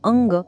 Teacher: अनुस्वारानंतर जर क, ख, ग किंवा घ आलं तर अनुस्वाराचा उच्चार ङ असा होतो. यासाठी आपण अंग हा शब्द घेऊया.